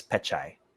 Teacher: it's supposed to end with the glottal stop